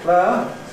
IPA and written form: ˈpleə (player)